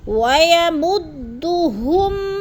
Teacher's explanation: ہم پہ غنہ بھی نہیں کرنا، اظہار یعنی ظاہر کر کے لفظ کو پڑھنا ہے